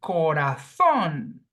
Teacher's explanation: phonetically, the sound falls on the last syllable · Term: oxytone words